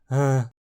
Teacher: relaxe mais a garganta, soltando mais ar que o normal, como se pronunciasse um H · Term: forma murmurada